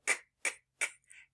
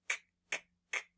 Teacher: You have your tongue at the back of your mouth, and it's a stop sound, meaning we can't stretch it. So our voice is off for this sound. So remember, we are going to go k, k, k, and we will feel that in our throats, but we're not going to feel it vibrating because it is an unvoiced sound. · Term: k sound